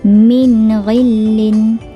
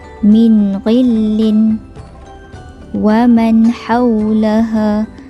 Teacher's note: Okey, bila kita buat min, itu adalah tidak jelas nun itu. Jadi nun sakinah dalam hukum izhar perlu jelas apabila nun sakinah ini bertemu dengan huruf ghain, huruf izhar halqi